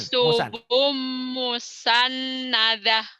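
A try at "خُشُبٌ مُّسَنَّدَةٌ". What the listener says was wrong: Tinggal hutangnya shinnya ya. Kan ada titiknya tuh. Khusyuk. Khusyubum.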